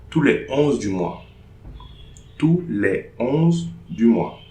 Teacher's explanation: No liaison between les and 11.